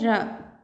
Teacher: लुंठित या प्रकंपित व्यंजन होता है र।